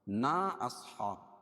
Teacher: نا اصحاب مد منفصل ہے، کیوں؟ اس لیے کہ حروف مدہ کے بعد حمزہ دوسرے کلیمے میں ہو تو مد منفصل ہوتا ہے، اور اس کو دو الف کے برابر تک کھینچ کے پڑھتے ہیں